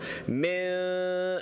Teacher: إخفاء. You got to hide the sound of noon by making a light nasal sound.